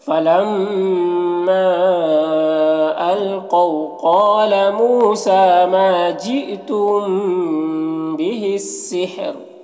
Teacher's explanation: را کو وقف کی صورت میں باریک پڑھیں گے، کیونکہ راء ساکنہ سے پہلے ہا ساکن ہے اور اس سے پہلے زیر ہے